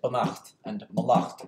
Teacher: So a good saying and a bad saying, but this acht ending isn't the normal abstract ending, which is why we still say banacht and malacht with the stress on the second syllable